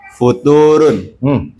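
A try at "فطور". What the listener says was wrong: Harokatnya salah.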